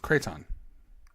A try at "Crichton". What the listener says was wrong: Quit saying ton. It's 10. The number 10.